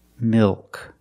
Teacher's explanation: It's not milk, it's milk. The tongue gets fatter at the bottom, it expands, and it goes up a little bit in the back. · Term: dark L